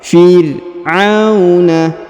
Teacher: Huruf ro dibaca sukun dan tipis ya.